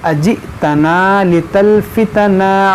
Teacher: ये हमजा साकिना है, झटका देकर पढ़ेंगे